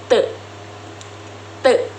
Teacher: Huruf T dibentuk dengan menggunakan lidah dan gigi atas serta menghasilkan suara yang tidak bersuara atau disebut letolar. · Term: letup alveolar